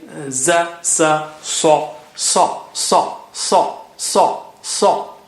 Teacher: And sa is the standard, sa, sa. And sa is very thick and high sounding